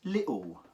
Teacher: you don't actually pronounce the T it goes lit okay and then the L becomes a W sound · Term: cockney accent